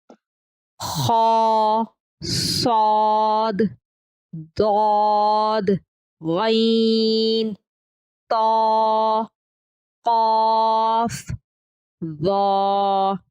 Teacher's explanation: حروف استعلاء یعنی حروف مستعلیہ یا موٹے حروف قاعدے اور قرآن پاک میں جہاں کہیں بھی آئیں گے انہیں موٹا اور مخففہ ادا کریں گے. انہیں صحیح ادا کرنے کا طریقہ یہ ہے کہ زبان کے آخری حصے کو اوپر تالو کی جانب اٹھائیں اور آواز کو موٹا کر کے حرف کے مخرج میں لگائیں